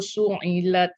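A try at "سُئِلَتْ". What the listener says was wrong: Okey, jangan bunyi su'ilat, dia bunyi macam baris dia huruf ain. Su hamzah, su'i.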